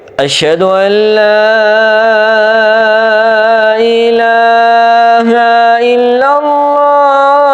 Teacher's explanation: انداز وہی ہے لیکن سر چینج ہو جائے گی اشھد ان لا الہ الا اللہ تین سٹیپ اوپر جانے ہیں